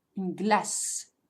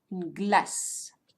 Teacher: You're not going to hear the final E, but just the sound s. Une glace. So gla and s.